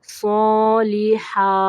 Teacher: صاد کو اوپر پڑھنا ہے، ہا کو واضح کرنا ہے